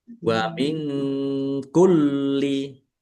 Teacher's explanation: nun sukun bertemu dengan huruf kaf bacaan ikhfa dibaca samar-samar